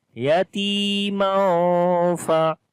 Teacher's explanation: Ta we long due to ya madda is there, and there is tanween on the mim. After the tanween, the next letter is ikhwa letter, which is fa. So we make the hiding sound of noon as we say yatima fa.